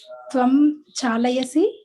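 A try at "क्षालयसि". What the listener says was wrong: Shalayasi. Oh, Shalayasi. You have to say properly. Shalayasi. I think I heard Chalayasi. Chalayasi means driving, causing to move. Shalayasi.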